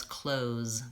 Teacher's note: which is a voiced th and a voiced Z clothes so many Americans will pronounce this just as clothes they leave that th out